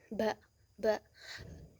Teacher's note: huruf ba itu keluarnya itu syafawi. Eh, bunyi bibir.